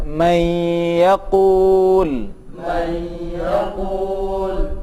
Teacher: Selanjutnya adalah satu hukum yang disebut dengan idgham bi gunnah, di mana saat nun mati bertemu dengan ya dan huruf gunnah yang lain, huruf idgham yang lain, maka harus dileburkan dan didengungkan atau digunnahkan